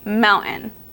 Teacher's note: I don't even say the T it Blends into the n